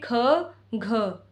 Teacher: जिन वर्णों के उच्चारण में अधिक वायु की आवश्यकता पड़ती है या उच्चारण में हकार की ध्वनि सुनाई पड़ती है, प्रत्येक वर्ग के द्वितीय और चतुर्थ व्यंजन को महाप्राण व्यंजन कहा जाता है।